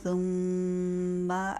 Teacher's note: ثم میں میم مشدد پہ غنہ پورا کیجیے